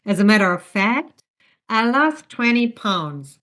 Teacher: Still, it's one phrase, but within that phrase, you go up after the introduction and down when the sentence is essentially wrapped up · You're only introducing the second part, sorry, the second part of the total phrase. So, your voice goes up after fact. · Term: non-final intonation, Non-final intonation